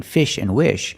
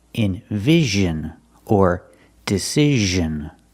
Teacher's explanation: it's not making the sh sound like in fish and wish it's making the z sound like Invision or decision it's the same position as sh like